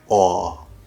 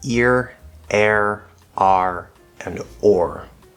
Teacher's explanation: most American speakers will pronounce all R's, consonant and vowel